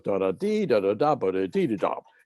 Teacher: you have to have a rising figure on the third syllable and a falling figure on the seventh syllable